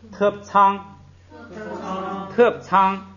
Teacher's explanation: 个口诀就把它记住了。下边咱们来这个读里头的那个具体例子，咱们看啊。你看头一个，原来这个▁terp▁是降调， 因为它在第一个音节不许降，所以把它读成平调